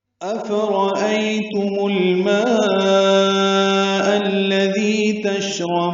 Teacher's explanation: تشربون شین ساکن پہ ہمس اور تفشی را پر ہے، اور بون میں با کو لمبا کریں گے۔